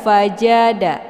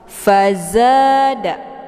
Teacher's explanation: Jim di tengah lidah, za di ujung lidah.